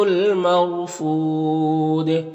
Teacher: یہاں پر الف لام حروف قمری میم کے شروع میں تو لام کو پڑھیں گے، الف کو نہیں پڑھیں گے۔ یہاں پر را ساکن سے پہلے میم کے اوپر زبر ہے تو را کو پر پڑھیں گے۔ فود میں وقف کریں گے تو مد عارض وقفی ہوگا اور دال میں قلقلہ ہوگا، تو اس طرح سے پڑھیں گے: بِئْسَ الرِّفْدُ الْمَرْفُودِ۔